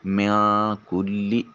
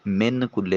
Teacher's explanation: من کلی، نون ساکن کے بعد کاف حرف اخفا ہے۔ نون ساکن کے بعد اخفا حرف آنے کی وجہ سے نون کو اپنے مخرج میں چھپا کر ادا کریں گے۔ میاں کلی، من کلی نہیں کہیں گے، میاں کلی۔